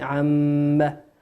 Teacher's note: قرأ عما يتساءلون. الميم قلنا ميم مشددة بمقدار حركتين